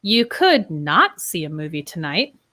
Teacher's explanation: When we use it in the negative form with not, we often put some word stress on not